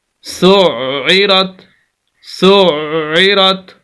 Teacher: وقف کریں گے، تا کو ہا سے، ہا کو ساکن، کرہ، سین پیش عین سع، عین زیر عی، سعی، سخت کرنا ہے، عین کو، آواز کو روکنا ہے